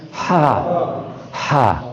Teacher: اس ہا کا مخرج ہے گلے کا درمیان